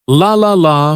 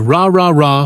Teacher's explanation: For the L sound, the tongue touches the top of the mouth behind the teeth